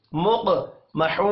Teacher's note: مق، قاف ساکن ہے، قلقلہ کرنا ہے اور قاف کو موٹا بھی پڑھنا ہے. مق محو، واو مدہ ہے، 1 الف کے برابر کھینچ کر پڑھیں گے